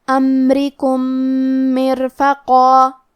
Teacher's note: کلمت امرکم میں میم ساکن ہے، لہذا ہمیں میم کو ظاہر کرنا ہے۔ را کے نیچے زیر ہے تو یہاں را کا حکم ہے ترقیق، ہم حرف الرا کو پتلی آواز میں پڑھیں گے۔ آخری میں میم ساکن ہے، پھر حرف المیم ہے۔